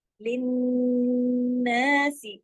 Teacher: सल सल न लिन्नासी रसूला, लिन्नासी, ये जो गुन्ना हुआ ना लिन्नासी, ये अकमल गुन्ना है, नून मुशद्दद है, ये लाजमी करना है क्योंकि यहाँ दो नून है। फिर सीन जेर सी एक हरकत है, एक हरकत पढ़ा जाएगा, लंबा नहीं खोचेंगे।